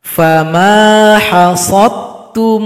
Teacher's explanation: huruf dal enggak dibaca lagi karena telah gabung kepada ta.